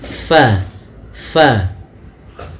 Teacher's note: huruf fa salah satu sifatnya yaitu dia hams mengalirnya nafas fa hati-hati di dalam melafalkannya jangan sampai dia terbaca dengan pabad bibir kita rapat.